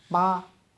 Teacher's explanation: बोलते ही आपके होंठ आपस में मिल जा रहे हैं